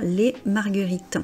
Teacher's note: On ne dit pas le S final